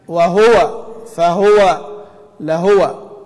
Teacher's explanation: وهذه طبعا موجودة في قراءة كثير من الأئمة كده يقرؤونها بس بالخطأ وليس نسبة إلى أبي عمرو، يعني كثير من الناس لا يضم الهاء أصلا يقول وهو، والصحيح في رواية حفص ومن وافقه أن تضم الهاء